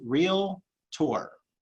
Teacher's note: the word is two syllables real tour two syllables real tour there is no vowel in the middle